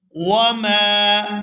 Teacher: یہاں میم کو کھینچ کر ادا کریں گے کیونکہ اس کے بعد الف مدہ ہے